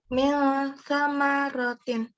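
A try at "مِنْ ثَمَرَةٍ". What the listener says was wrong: Ya, ming samarotin. Sa-nya lidahnya digigit ya, bagian depan. Ming samarotin.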